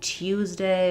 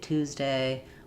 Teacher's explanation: In American English, we have dropped that yeah. It's called yod dropping, and we've dropped it before the N, the T, the Z, the D.